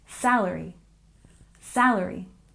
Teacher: And salary, we stress the first syllable.